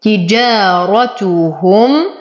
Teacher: وأصبر على الميم لأنها من حروف البينية، وبعدها واو فالحكم إظهار شفوي